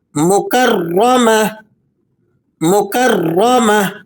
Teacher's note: اس گول تا پر آپ وقف کریں گے تو اسے ہا کی آواز سے ادا کریں گے